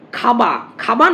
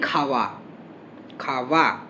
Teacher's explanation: খাবা মানে ওষ্ঠধ্বনি, ওষ্ঠধ্বনি ব উচ্চারণ না করে আমরা দন্তষ্ঠ উচ্চারণ করি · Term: অন্তঃস্থ ব শ্রুতি